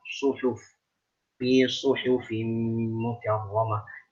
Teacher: Hati-hati shad jangan sampai seperti sin. Suhuf, tapi su tebal.